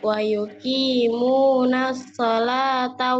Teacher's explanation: Wa yuqimuna, munya panjang, jangan ditasdid.